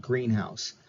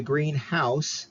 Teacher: English in this case Greenhouse together is a compound word and we have the stress on that first word Greenhouse